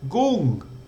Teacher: Go with a falling tone